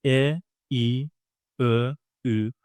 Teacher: e, I, ö, ü are produced from the front part of the mouth. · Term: front vowels